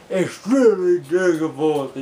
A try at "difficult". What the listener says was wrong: I didn't have an L-Y at the end. It's extremely difficult. That's how you pronounce difficult. Not difficulty.